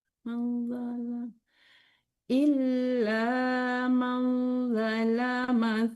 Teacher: Tidak panjang, yang tahan zanya.